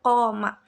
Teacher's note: tempat keluarnya huruf pada bagian langit-langit yang menonjol ke bawah, dan ini adalah satu-satunya artikulator. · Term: uvular